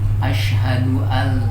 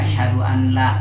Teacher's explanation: melebur huruf yang pertama atau dimasukkan huruf yang pertama kepada huruf yang kedua nun mati kepada lam